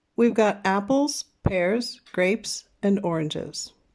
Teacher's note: lists we use rising rising rising then falling